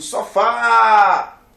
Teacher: sofá tem acente porque ela é uma oxítona eu digo sofá a sílaba tônica é a última é um oxítono terminado em a se tá na regra coloca